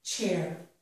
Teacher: The sound ch is the sound that we hear at the beginning of the word chair. It is a combination of the t sound and the sh sound. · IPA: /tʃ/